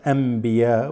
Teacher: So you have a noon with a ba right after. This noon always has an assimilated meme.